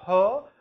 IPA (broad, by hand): h